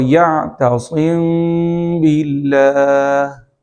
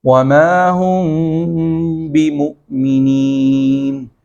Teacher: با کو بولنے سے پہلے میم کی آواز کو تھوڑا سا ناک میں چھپائیں گے اور ہونٹوں کو مکمل طور سے مخرج کی طرح ملنے نہیں دیں گے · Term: اخفاء شفوی